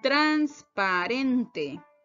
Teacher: Transparente tiene una sílaba tónica, ren. Y las demás o el resto de sílabas de esta palabra serían las sílabas átonas, trans, pa y te.